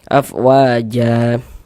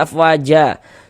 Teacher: Mad iwad itu dibaca dengan panjang 2 harokat. Jadi mad iwad itu terjadi kalau kita baca Al-Qur'an, kemudian kita itu berwaqaf, berhenti kita di huruf yang memiliki tanda baca fathatain.